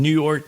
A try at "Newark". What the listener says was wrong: Newark. It's one word, not two words.